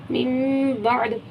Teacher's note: कलकले हुर्फ में से कौफ तो बा जिम दाल, दाल आ रहा है, दाल साकिन हो गया लास्ट में, तो हमने यहाँ पे कलकला करा। मिन बअद ऐसे करके रुकेंगे कि आइन भी निकले, दाल भी निकले, कलकला भी हो जाए।